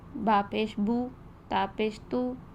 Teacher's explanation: Sound میں کرتے ہیں تو یہ مجہول انداز ہو جائے گا۔ پیش کو ادا کرتے ہوئے ہونٹوں کو گول کرتے ہیں، اس میں او کی ساؤنڈ آتی ہے